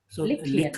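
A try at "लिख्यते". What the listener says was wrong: Likhyate. Kha has halant, isn't it? Likh.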